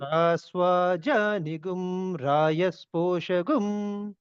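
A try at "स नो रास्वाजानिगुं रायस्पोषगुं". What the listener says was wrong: మీరు అంతా కరెక్ట్ గా చెబుతున్నారు కానీ ఆ నీ కిందకి వినబడుతుంది నాకు సనో రాస్వాద్యానిగుం అని చెప్పాలి. నీ కూడా కిందకి వినబడుతుంది నాకు. సనో రాస్వాద్యానిగుం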